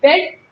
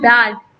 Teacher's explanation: बेड और सेड जहाँ पे टंग हाफ ओपन पोजिशन में है, और बैड और सैड जहाँ पे टंग फुल ओपन पोजिशन में है · in this vowel sound, tongue is in half position, half open position, and here tongue is in open position